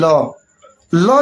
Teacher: जब आप बोल रहे हैं तो कहीं ना कहीं आपकी जो जीवा है वो पीछे की तरफ मुड़ रही है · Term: पार्श्विक व्यंजन